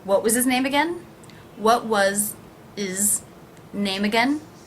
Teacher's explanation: And here, how will I pronounce his? I will drop that H.